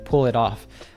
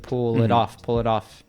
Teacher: if we have like an it in the middle, because it's between vowels, we get that American T